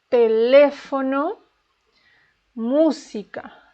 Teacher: the stress is in the third to last syllable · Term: Esdrújulas